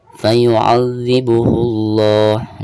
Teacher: Nah ini lam jalalah dibacanya 2 harokat ya, dan ini termasuk lam jalalah tabkhim. Jadi cara membacanya harus ditebalkan karena sebelum lam jalalah tersebut ada harakat dhammah ya.